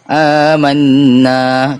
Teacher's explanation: Itulah wajibul ghunnah. Panjang harakatnya 2 atau 3 dan kena baca dengan dengung.